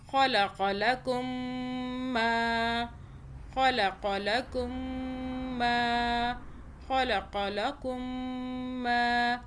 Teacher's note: خا کو موٹا پڑھیں، قاف کو بھی موٹا پڑھیں